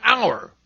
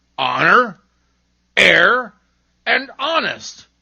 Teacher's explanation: At the beginning of some words, H is seen but not heard, as in hour. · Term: silent H